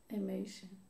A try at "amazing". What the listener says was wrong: You're saying an S. This is a Z. Amazing. Amazing.